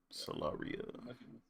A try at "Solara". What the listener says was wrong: No, it's not I, man. It's not I. It's Solara. It's Solara. It's not I.